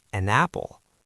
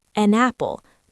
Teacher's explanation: When one word ends with a consonant sound, like the N in an, and the next word starts with a vowel sound, like the A in apple, they join. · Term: consonant to vowel linking